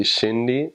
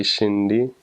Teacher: the R sound is kind of like a D, it's kind of like an L. It's kind of like an R, and so that one took me a while to get.